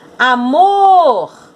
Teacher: a sílaba tônica é mor